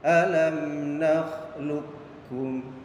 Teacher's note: Dan contohnya di sini idgham mutaqaribain huruf qaf sukun yang bertemu dengan kaf yaitu alam nakhluqukum. Jadi cara bacanya qafnya tidak dibaca qalqalah, jadi tidak dipantulkan. Jadi suara huruf qaf itu dimasukkan kepada huruf kaf.